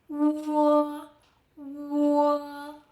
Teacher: u starts with brief u, then opens into o.